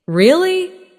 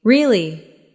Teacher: Try saying, Really? Rising tone curiosity. Really? Falling tone confirmation.